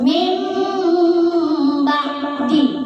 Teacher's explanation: Mim, kasih lama, tahan juga 2 harakat ya. Jangan terlalu cepat. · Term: iklab